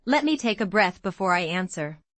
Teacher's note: The calm phrase has a falling tone on breath, showing control.